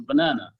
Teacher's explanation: the word banana has a main stress on the second syllable, banana, and the other two syllables are schwa